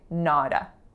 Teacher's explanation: tell me how I'm linking not with a when I say nada, with an alveolar flap.